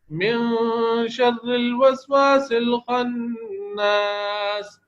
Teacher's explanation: اخفا کے اندر زبان کی نوک نون کے مخرج پر نہیں لگتی، بس ناک میں آواز چھپائی جاتی ہے